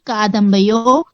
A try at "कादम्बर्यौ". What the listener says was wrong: न र भवति कादम्बर्यौ